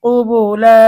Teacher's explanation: কুবুলা অক্ফ করার কারণে এক আলিফ টান হবে